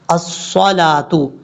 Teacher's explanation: صاد حروف مستعلیہ میں سے پر پڑھا جائے گا.